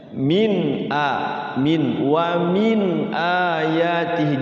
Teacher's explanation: ini bacanya izhar halqi itu jelas ya jangan disamar-samarkan